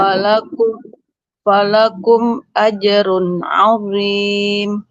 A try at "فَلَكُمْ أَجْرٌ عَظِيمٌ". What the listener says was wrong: azim. Lo-nya dia sudah bagus Ibu. Cuman jangan naikkan dulu pangkal lidah sebelum ainnya selesai. Azim. Biar ainnya tetap ringan. Falakum ajrun azim.